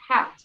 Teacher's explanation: So the C is explosive, right? It's like cat.